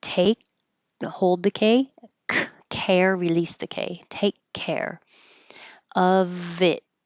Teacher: take ends with a K. Care begins with a K. So you'll just hear one.